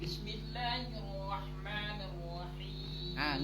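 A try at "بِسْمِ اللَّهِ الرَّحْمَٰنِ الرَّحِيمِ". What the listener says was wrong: Ni-nya tarik, jadi ne tadi. Kalau nggak tarik masih jadi ne.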